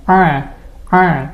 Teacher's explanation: Kalau huruf ain kan dari tengah tenggorokan, suaranya A.